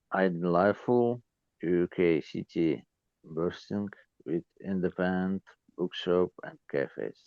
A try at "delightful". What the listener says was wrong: When you're saying this word, I'm mainly hearing just the first bit of the word. I think you're sort of missing that little bit at the end, maybe. It's only a small detail, really, I suppose.